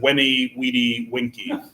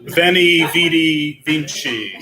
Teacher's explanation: the V is pronounced like a W